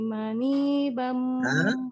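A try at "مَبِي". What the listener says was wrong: Mabi, bukan Madi. Mabi.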